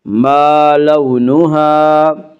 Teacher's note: یبین لنا ما لونها، واولین، واولین وہ واو جو ساکن ہو اور اس سے پہلے زبر ہو، واولین کو نرم آواز کے ساتھ جلدی پڑھیں گے۔